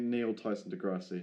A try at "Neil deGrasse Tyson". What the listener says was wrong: I think you got his name wrong, but that's... You said his name backwards.